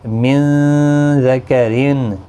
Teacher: نون ساکن کے بعد زال اخفاء حقیقی ہوگا، گنہ کے ساتھ پڑھیں گے۔